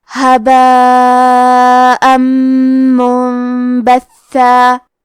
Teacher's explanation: اس مد میں ہم اپنی آواز 4 مد کے برابر لمبی کریں گے۔ آخری میں حمزہ پہ تنوین زبر ہے، پھر حرف المیم آتا ہے کلمت منبثہ، میم حروف الادغام بغنہ میں سے ہے تو ہم یہ حکم کو غنہ اور تشدید کے ساتھ ادا کریں گے، هباء منبثا۔